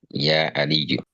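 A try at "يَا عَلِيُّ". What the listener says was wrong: Yes, Ya Aliyu.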